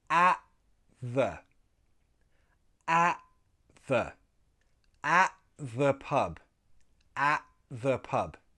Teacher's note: We glottalize the T. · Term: glottal T